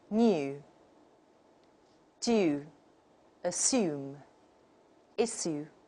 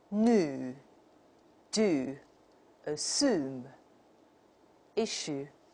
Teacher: Another difference would be y dropping in the American model